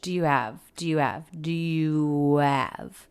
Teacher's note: it's not uncommon to drop the h in these function words like have had his her